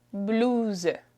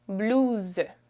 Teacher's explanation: So we replace the S sound with a Z sound.